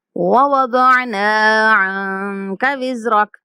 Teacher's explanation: اس آیت میں ہم نے نون کے بعد الف مدہ ہے تو نون کو لمبا کرنا ہے، اور نون کے علاوہ ہم نے کسی لفظ کو لمبا نہیں کرنا۔